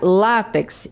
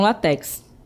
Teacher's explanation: Temos a palavra látex em vez de látex, né? Então, observe aí que eu tenho o acento tônico é no lá e não no final. Então, a gente pronuncia látex e não latex, certo?